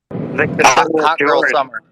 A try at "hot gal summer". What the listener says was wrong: But here's the thing: it has to be Caribbean, so it's hot gal. There's no H.